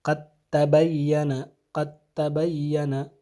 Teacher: مخرج ایک ہے، تو یہاں پہ دال کا کوئی اثر باقی نہیں رہے گا، بلکہ آواز کس کی آئے گی؟ تبین کا جو تا ہے اس کی آواز آنی چاہیے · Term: ادغام